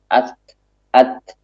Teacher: Kita mengalirkan nafas kita bersamaan dengan ketika kita mengucapkan huruf ta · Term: sifat hamas